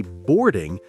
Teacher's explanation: native speakers often say boarding more like board without the strong G sound at the end